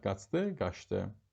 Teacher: Qaç sözün kökü d, qrammatik şəkilçi. D samiti gəldiyi üçün ş-yə çevriləcək tələffüzdə.